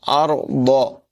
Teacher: ضاد کو بھی پر آواز میں پڑھیں گے